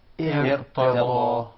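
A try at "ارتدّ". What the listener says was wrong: Now we feel that the Ra is coming from the proper origin.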